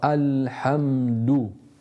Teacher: the dal with the dhamma that my lips are going out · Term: itmam al-harakat